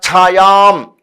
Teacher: ఛ అనేటువంటిది మహాప్రాణ అక్షరం. దానికి మహాప్రాణ అక్షరం మరియు అది దీర్ఘాక్షరం. ఛాయాం కుర్వంతి, కుర్వంతి, చ ప్లస్ అన్యస్య, చాన్యస్య, ఇక్కడ సంధి కూడా ఉంది.